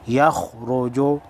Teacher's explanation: یا خا زبر یخ، را پیش رو، یخ رو، خا حروف مستعلیہ میں سے ہے، موٹی پڑھی جائے گی